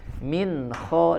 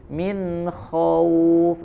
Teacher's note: ada nun sukun bertemu huruf kha, maka tidak disertai dengan tambahan gunnahnya. Min kha langsung masuk ke huruf kha-nya. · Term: idhar